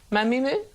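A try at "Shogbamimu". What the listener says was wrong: You just missed the B. Try again.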